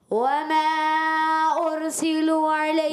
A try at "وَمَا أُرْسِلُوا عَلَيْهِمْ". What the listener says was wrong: دیکھیں ارسلوا علیہم نہیں، ارسلوا علیہم، واو مدہ کھینچ رہے ہیں، دوبارہ پڑھیں۔